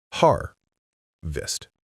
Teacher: The stress is on the first part.